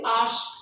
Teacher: আশা শব্দের শেষে আ ছিল, যখন বলছি আশ, আটা আর নেই। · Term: অন্তঃস্বর লোপ